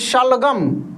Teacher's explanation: तालव्य श का उच्चारण तालु से